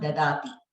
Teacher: In dadati, both the dakaras are in alpa prana. Dadhati. The second da is mahaprana.